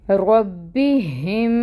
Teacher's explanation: اور یہ جو ہا ہے یہ اقصی الحلق سے ادا ہو رہی ہے. ربہم، میم شدد اب آ رہا ہے تو یہاں پہ ہم نے کیا کرنا ہے غنہ، اور غنہ کیا ہوگا 2 کاؤنٹس کے برابر، اور اس کے نیچے جو زیر کی حرکت ہے وہ 1 کاؤنٹ ہوگی.